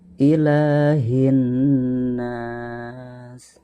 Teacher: lapad la ini harus dipanjangkan sebanyak 2 harokat, disebut dengan mad tabi'i atau mad asli, karena ada harokat fathah yang berdiri ya.